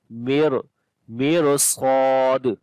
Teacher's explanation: after the ra sakin, the next letter is a sad. This is isti'la letter. We read this ra in heavy sound now. Mir sad, and sad we long also due to alif madda, and on the dal we make qalqala.